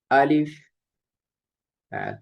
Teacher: আলিফ মুখের খালি জায়গা হতে উচ্চারিত হয়।